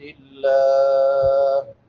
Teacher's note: لفظ اللہ سے پہلے زیر ہے تو اس کو باریک پڑھیں گے، اور اگر زبر ہو پیش ہو تو پھر یہ پر پڑھا جاتا ہے.